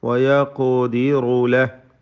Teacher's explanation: ഖാഫിന് ഖൽഖല സുഗ്റ നൽകി ശബ്ദം ചലിപ്പിച്ച് ഹറക്കത്ത് പോലെ വ്യക്തമാക്കി ഉച്ചരിക്കുക. തഫ്ഖീം ചെയ്ത് ഖാഫിനെ ഉച്ചരിക്കണം. · അവിടെ ഹായിൽ സുക്കൂനാണ് വഖഫ് ചെയ്യുമ്പോൾ നൽകേണ്ടത്. ചേർത്തോതുകയാണെങ്കിൽ മദ്ദുസ്സില സൂറ നൽകി വയഖദിറു ലഹു വമ എന്ന് ഓതേണ്ടതാണ്.